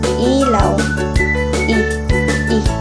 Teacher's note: Mataas at nasa harap ang dila tulad ng salitang ilaw.